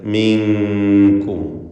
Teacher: സാക്കിനത്തെ നൂനിനെ ഇഖ്ഫാ ഹഖീഖി നൽകി മറച്ച് മണിക്കണം. കാഫിന് മുമ്പിൽ മിൻകും.